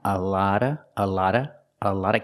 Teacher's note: the T makes a fast D sound